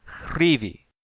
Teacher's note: Sometimes H isn't a strong enough sound, and I need to find alternatives, like this voiceless vowel. The _0 is an undocumented feature that makes a sound voiceless.